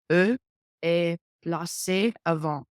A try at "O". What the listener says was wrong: C'est pas E, mais c'est O. Like a letter O. O. O. Hard because we see an A and we want to say ah, because that's what they taught us.